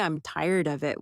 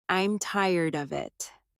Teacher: I'm tired of it with of sounding almost like uh these weak forms are part of the rhythm of English.